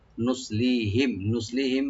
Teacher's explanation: নুসলিহিম, নুসলিহিম সোয়াটাকে একটু ডিপ করে পড়বো, লি একালে টানবেন। আর মিম সাকিন এখানে আমরা জাহার করে পড়বো, এখানে কোনো গুণা হবে না।